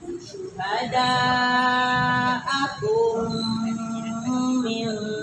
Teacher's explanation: Jadi mim ketemu mim dibacanya gimana? Didengungkan ya.